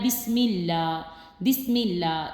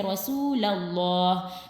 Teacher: اسم اللہ سے پہلے زیر آ جائے تو اس کو جو ہے نا ہم باریک پڑھیں گے